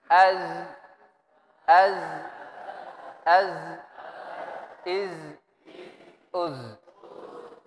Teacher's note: Itu huruf zai berada pada ujung lisan